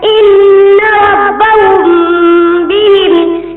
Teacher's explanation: اخفاء شفوی، جب میم ساکن کے بعد با آ جائے تو وہاں پر اخفاء شفوی ہوگا، اور میم ساکن ایک الف کے برابر غنہ ہو کر پڑھا جائے گا